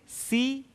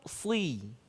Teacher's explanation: Perbedaannya secara ringkas, sin tipis, sod tebal.